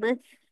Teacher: dia sebut dengan keluar sikit lidah tu